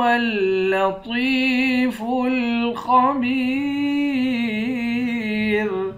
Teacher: طوا کو موٹا پڑھیں گے، خا کو بھی موٹا پڑھیں گے، با کو یا کے ساتھ ملا کر ایک الف کی مقدار کھینچیں گے، آخر میں را ساکن ہے۔